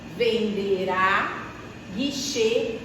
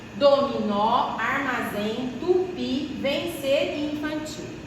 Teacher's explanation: todas as palavras vão ser fortes na última sílaba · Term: Oxítonas